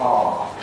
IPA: ɑː